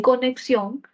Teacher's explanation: y en conexión la c tiene valor oclusivo por lo que es la k